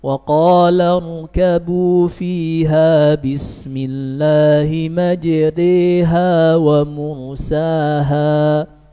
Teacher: memalingkan bacaan harokat fathah mendekati harokat kasrah dan memalingkan bacaan huruf alif menjadi huruf ya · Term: al-imalah